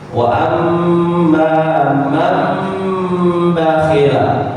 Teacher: ketika nun bertemu ba berbunyi huruf mim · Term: iqlab